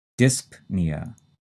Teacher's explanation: The next term is dyspnea, and like apnea, the stress is in the first syllable, and we say that P